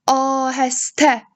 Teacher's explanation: birinci sait, A sait uzanır və vurğu sonuncu hecəyə düşür.